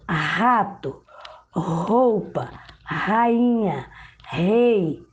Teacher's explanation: O som é produzido na garganta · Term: R forte